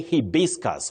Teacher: you say hibiscus with a stress on the second syllable.